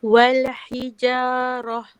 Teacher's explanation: sebab ha tu dekat dalam halkum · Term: ta bulat